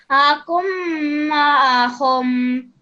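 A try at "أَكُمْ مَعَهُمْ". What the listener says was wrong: Just make sure you hold that meme sound in your mouth for a bit longer. Akum ma'ahum. Akum ma'ahum.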